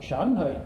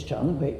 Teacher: the two rising tones begin at the same level and rise to different levels